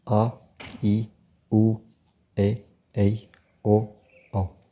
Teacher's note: इनके उच्चारण में ह्रस्व स्वर से 2 गुना समय लगता है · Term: दीर्घ स्वर